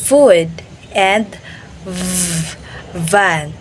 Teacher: So labiodental, the bottom of your lip touches the upper of your teeth